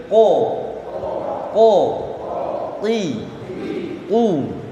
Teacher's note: Jadi karena tempat huruf qaf ini, ya, di bagian lidah paling belakang ditemukan dengan langit-langit berdaging di atasnya, ya. Hingga suaranya ko.